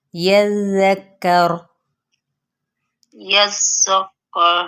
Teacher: ذال نرمی کے ساتھ باریک پڑھا جائے گا اور کاف بھی باریک ہے